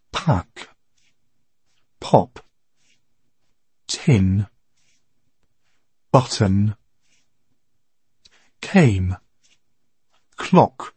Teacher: тези три съгласни се различават от нашите П, Т и К, защото се произнасят с повече въздух. · На английски се произнасят с придихание, което ще рече, че издишваме, когато ги произнасяме.